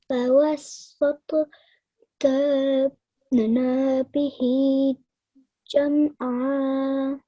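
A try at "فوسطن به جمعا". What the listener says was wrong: Now over here again, you just elongated the na out for a bit too long, okay? Just a simple na. Just 1 second rule applies here, okay?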